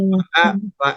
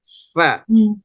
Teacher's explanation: Karena makhrajnya adalah bibir bagian bawah, bagian perut dalam bawah bibir ditekan oleh gigi atas begitu. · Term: huruf fa